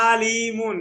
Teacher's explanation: আপনি লিড থেকে বেশি টানছেন আইন জবর আ হরকত এটাকে আপনি টানছেন